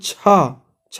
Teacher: छा हमारा तालव्य से निकल रहा है